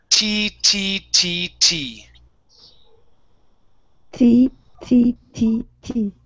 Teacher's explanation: the difference with the t in english is that we don't touch our tongue to the teeth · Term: t sound